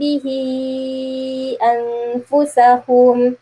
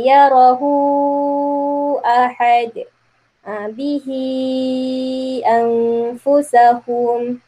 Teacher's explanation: bila bertemunya mad silah ni ha dhamir ni bertemu dengan hamzah, maka dia akan jadi panjang. Kadar bacaan dia 4 atau 5 harkat.